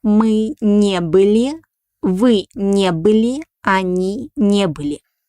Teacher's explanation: the accent falls on a negative particle